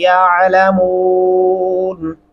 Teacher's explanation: یعلہ گلے سے ادا کریں گے